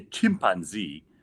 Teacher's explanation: Americans put the emphasis on pan. Nigerians put the emphasis on chimp.